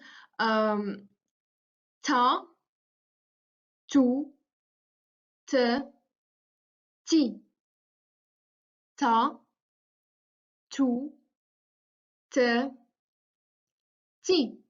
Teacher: Voiceless because there is no vibration in the vocal tract. Alveolar, again, because when we are articulating it, we use the tip of our tongue, which goes towards the alveolar ridge. And plosive because there is a complete closure being made in the mouth. · Next, we have the sound T, which is a voiceless, alveolar, and plosive sound. Voiceless because there is no vibration in the vocal tract.